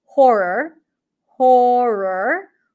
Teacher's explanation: you're likely to keep the tongue up for the r and then it might just sound like one long R